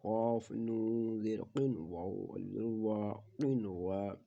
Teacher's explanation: اور کلمے میں آنے کی وجہ سے ادغام نہیں ہوگا بلکہ کیا ہوگا، اظہار مطلق ہوگا ، کیونکہ نون ساکن کے بعد حروف یرملون ایک کلمے میں